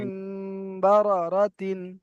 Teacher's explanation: তানবিনের পরে অন্য কিছু অক্ষর আসলে অন্য কায়দা হবে, বা আসলে আজকেকার এই কায়দাটা হবে, ইকলাব হবে। তানবিনের পরে যদি বা আসে তাহলে তানবিন আর নুন সাকিন, ওই দুটোর মানে উচ্চারণটা আর হবে না, তখন মিমের উচ্চারণ হবে এখানে।